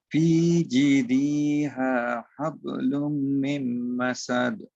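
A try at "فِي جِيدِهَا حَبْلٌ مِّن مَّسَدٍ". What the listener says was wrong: না ভাই, দিতে টান হবে না, দিতে টান হবে না। দিহা, দ রসিকার দি, হ আকার হা, দিহা।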